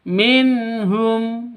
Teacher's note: Di sini ada nun mati bertemu dengan ha. Cara bacanya jelas, tidak boleh disentak, tidak boleh didengungkan. Minh salah, Minum juga salah.